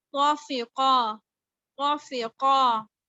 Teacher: اس کے آگے دیکھیں قا فتحہ قا، قا کسرہ فی، قا فتحہ قا، قا، قا کو پر رکھنا ہے، فا کو باریک کرنا ہے، قاف کو پر رکھنا ہے